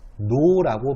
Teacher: 여기서 변화의 양상을 보면은 이응과 리을이 만났을 때 이응과 니은으로 되었어요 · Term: 비음화